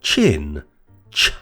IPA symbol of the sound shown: tʃ